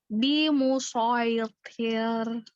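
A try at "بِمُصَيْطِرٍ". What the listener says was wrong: Nah, jangan dari T-nya tuh jangan T, tapi wi. Jadi tebal.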